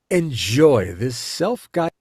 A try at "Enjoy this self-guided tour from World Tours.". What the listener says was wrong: Too slow, right? A little dramatic. Dramatic,